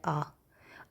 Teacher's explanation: विवर्त का मतलब होता है खुला। जब भी हम आ का उच्चारण करते हैं तो हमारा मुंह पूरा खुलता है